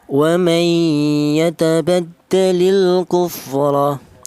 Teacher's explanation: memasukkan huruf nun yang mati ini dimasukkan ke huruf yang ya ini sehingga menjadi satu huruf yang bertasdid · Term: idgham bi gunnah